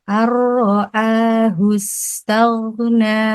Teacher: nun sukun yang tidak ada lambang sukunnya bertemu dengan huruf ro yang bertasdid. Jadi langsung membacanya langsung ke huruf ro. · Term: idgham bila gunnah